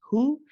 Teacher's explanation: The ha we've discussed is from the bottom of the throat, so you don't need to squeeze, nice and relaxed.